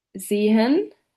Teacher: The closed mid-front unrounded vowel